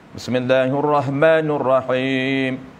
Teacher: Huruf ra itu huruf tafkhim. Karakter dia, ciri ra fathah mesti tebal. Dia tebalkan huruf ra sehingga tebalkan sekali huruf ha, bertukar apabila sebutan tebal huruf ha bertukar jadi ha.